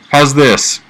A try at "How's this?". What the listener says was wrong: You forgot to breathe, man.